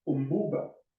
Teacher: the ba sound in umbuba is in fact more of a pa than a ba, more voiceless than voice. And that's because it's preceded by a meme, which is in fact in which the lips are closed tight, and then ba is also pronounced after that, so it gets the voicelessness from the preceding sound. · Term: assimilation